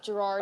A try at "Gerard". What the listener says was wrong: Oh, actually, it's Gerard. I don't pronounce the second R.